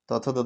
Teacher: उच्चारण स्थान दंत हो जाएगा दांत के सहारे बोला जाता है